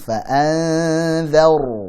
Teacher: Fa anzar, siap-siap ke dal. Jadi nun sukun ketemu dal ikhfa hakiki dibaca tipis